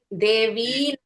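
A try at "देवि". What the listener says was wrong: మరి దేవి అనకూడదు, దేవి. అక్కడ కూడా హ్రస్వం, సంబోధనలో స్త్రీలింగ శబ్దాలకి ఆకారాంతమైతే ఏకారం వస్తుంది, ఈకారాంతమైతే హ్రస్వం వస్తుంది.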